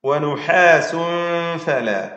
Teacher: തൻവീനിനെ ഇഖ്ഫാ ചെയ്ത് അവ്യക്തമാക്കി മണിക്കുകയാണ് വേണ്ടത്